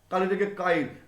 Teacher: কালি থেকে কাইল, এই লয়ের পরে উচ্চারণ না হয়ে লয়ের আগে উচ্চারিত হয়ে যাচ্ছে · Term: অপিনিহিতি